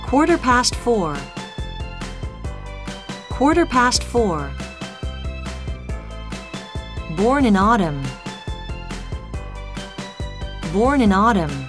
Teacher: khi âm R đằng sau âm O dài thì người Mỹ, người Ireland và một số người Anh vẫn phát âm âm R này nhé